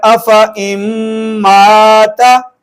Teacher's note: تشدید ہے، ہم نے پڑھا تھا کہ نون مشدد اور میم مشدد پہ ہر حال پہ غنہ ہوگا